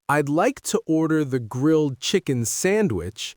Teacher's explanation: you stress grilled, chicken, and sandwich. The small words fade into the background. That's the natural rhythm of American English.